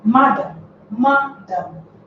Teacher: The first syllable, which is ma, if you listen to it, it bears a higher tone marker, a higher voice pitch. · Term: stress at the first syllable